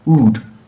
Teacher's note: The same position. The position is not changing when I'm pronouncing the vowel sound. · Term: monophthongs